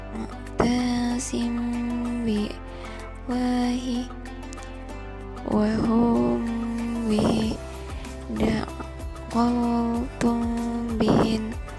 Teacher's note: Apabila mim bertemu dengan huruf ba, cara bacanya harus samar-samar di bibir dan didengungkan. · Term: ikhfa syafawi